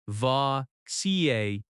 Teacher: That ca sound is strong.